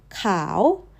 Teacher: white rises like a question. Rice falls off the edge, and news sits down low. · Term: rising